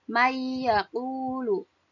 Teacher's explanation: tertulisnya man yaqulu, tetapi dibaca may yaqulu karena nun sukun bertemu dengan ya, hukumnya menjadi idgham bi gunnah.